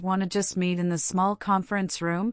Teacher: her voice might rise slightly at the end, making it a suggestion rather than a statement. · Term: intonation